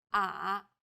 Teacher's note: the third tone goes down from a low pitch then Rises to the middle of the pitch range